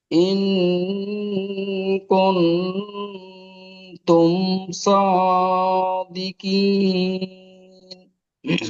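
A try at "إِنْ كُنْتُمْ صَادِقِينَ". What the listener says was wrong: মাশাআল্লাহ, মাশাআল্লাহ।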